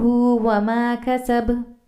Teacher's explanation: ہم با پر رک گئے ہیں یعنی وہ با ساکن میں آ گیا ہے، سکون میں آ گیا ہے، اس لیے اس پر قلقلہ ہوگا